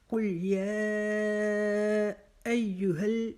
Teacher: یا کو ہم نے 4 الف کے جتنا لمبا کھینچنا ہے، اور اس کے بعد جو مد کی وجہ سے 4 الف کے جتنا اور کھڑا زبر کی وجہ سے 1 الف کے جتنا، تو اس کو ہم 5 الف کے جتنا کھینچیں گے۔